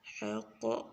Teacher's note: قاف کو موٹا اور شد سختی سے